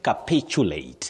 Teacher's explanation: the stress is on the second syllable for that word